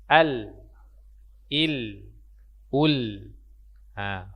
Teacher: Di mana tempat huruf lam, ujung lidah bertemu dengan langit-langit bagian depan.